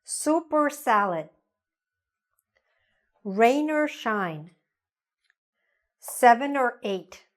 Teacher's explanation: the word or gets reduced, gets shortened, gets linked to a word before or a word after